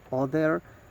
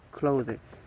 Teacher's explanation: the voicing is voice, and the place of articulation is dental